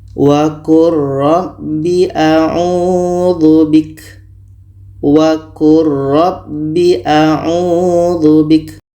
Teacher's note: Lam mati bertemu ra, ini idgham mutaqaribain. Jadi bunyi lam ini kita masukkan ke ra secara sempurna. Bunyi lam tidak terdengar lagi.